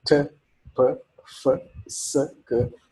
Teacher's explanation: I noticed that my vocal cords do not vibrate when I pronounce them. They are referred to in phonetics as voiceless sounds.